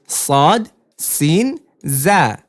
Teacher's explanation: দালও পাতলা তাও পাতলা কিন্তু ত মোটা এজন্য তম্বর মাখরাজ হচ্ছে জিহ্বার আগা সামনের নিচের দুই দাঁতের পেট ও আগার সঙ্গে লাগিয়ে উচ্চারিত হয়